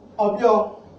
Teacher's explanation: Irwa, the U is low, so the A has a high tone. Obyo, the I has a high tone and the O has a step tone